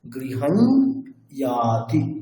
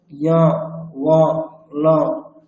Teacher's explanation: আপনাকে নাক দিয়ে একটা ইয়কার উচ্চারণ করতে হবে। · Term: অনুনাসিক যকারের রূপ